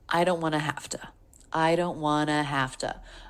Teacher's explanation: so want to becomes wanna.